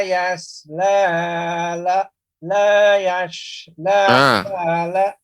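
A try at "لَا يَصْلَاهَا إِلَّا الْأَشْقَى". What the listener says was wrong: Harus dibedakan Bapak, huruf jadi shad ini bukan huruf shin, bukan la yash ya. Tapi juga bukan tipis huruf sin, la yasla, salah juga. Tapi dia adalah huruf sin yang ditebalkan. La yaslaha, yaslaha.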